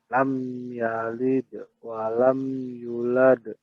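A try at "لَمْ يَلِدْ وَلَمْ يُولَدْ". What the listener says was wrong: Yulad. U-nya yang panjang.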